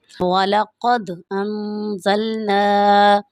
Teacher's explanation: یہاں پر نون ساکن ہے، نون ساکن کے بعد زا ہے، تو یہاں پر اس لیے ہم غنہ کریں گے۔ یہاں پر حروف ہلکی میں سے کوئی لفظ نہیں ہے، اس وجہ سے ہم یہاں پر غنہ کریں گے۔